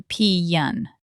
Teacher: The word pen, as in a sewing pin, also gets drawn out to pee-yan.